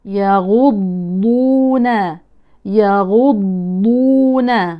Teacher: ليست من طرف اللسان وكانها دال ولكن من حافه اللسان